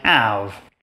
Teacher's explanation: French doesn't have that H sound at the beginning, but it's totally fine with a sound like V coming at the end of a word. So a French learner of English will usually say something like have. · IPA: [æv]